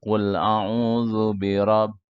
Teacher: n-nya banyak sampai 3 detik